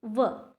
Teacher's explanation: एक ही वर्ण का उच्चारण होता है और वो भी दंत और ओष्ठ की सहायता से दोनों मिलकर करते हैं, इसीलिए उसको दंतोष्ठ कहते हैं।